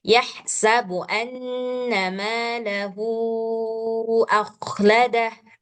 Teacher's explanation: Jadi matsilah tawilah ini adalah matsilah yang di depannya ketemu dengan hamzah. Nah, ketika matsilah bertemu dengan hamzah, namanya matsilah tawilah, panjangnya jadi berubah. Panjangnya jadi sama seperti mad jaiz munfasil ataupun mad wajib muttasil, 5 harkat atau 6 harkat panjangnya.